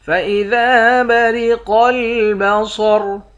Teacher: قوف کو موٹا پڑھیں گے، صاد اور را کو بھی موٹا پڑھیں گے